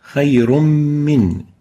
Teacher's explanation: Tanween, now it's in gray, indicating idgham merger. Min, indicating ghunna. So a combination of idgham and ghunna.